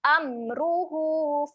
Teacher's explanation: Huruf mim ni dibaca dengan jelas. Jangan dengungkan dekat sini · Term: bacaan jelas